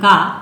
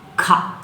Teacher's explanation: ಕ ಎನ್ನುವಾಗ ಸ್ವಲ್ಪ ಉಸಿರಿನೊಂದಿಗೆ ಉಚ್ಚರಿಸುತ್ತೇವೆ ಖ ಅನ್ನುವಾಗ ಹೆಚ್ಚು ಉಸಿರನ್ನ ಹೊರಹಾಕಿ ಉಚ್ಚರಿಸುತ್ತೇವೆ